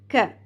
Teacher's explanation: کاف باریک پڑھا جائے گا ہلکی سی کھ ساؤنڈ کے ساتھ